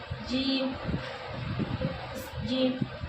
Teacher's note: جیم زبان کا بیچ اور اس کے مقابل اوپر کا تالو